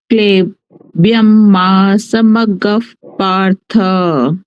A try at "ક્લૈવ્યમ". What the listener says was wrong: ક્લે નથી, ક્લઈ છે. ક્લઈ બે માત્ર છે ને. ક્લઈ. ક્લઈ.